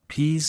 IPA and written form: piːz (Peas)